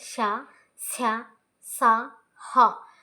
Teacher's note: గాలిని బయటకు ఊదుతూ పలికే అక్షరాలను ఊష్మాలు అని అంటారు.